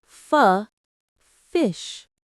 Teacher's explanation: F, from the air passing through your lips and teeth.